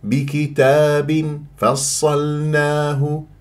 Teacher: باطن الشفه السفلى مع الثنايا العليا من غير طبق للشفاه لا تطبقها لا تخنق الغنه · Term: الاخفاء